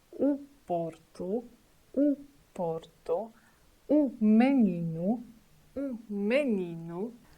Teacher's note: Letter o situated at the end of the word mainly sound like u